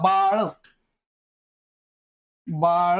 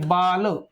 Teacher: मित्रांनो बघा ळ आणि ल फरक आहे. ळचा उच्चार करताना आपला जो जीभ आहे ती मूर्धाकडे जाते आणि ज्यावेळेस आपण ल उच्चारतो तर आपली जीभ दातांकडे येते.